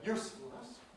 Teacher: has an /uː/ vowel that is really quite short in its duration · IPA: /ˈjuːsfl̩nəs/